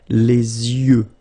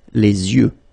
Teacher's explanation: you make this liaison between the two, les yeux. Okay, final X not pronounced.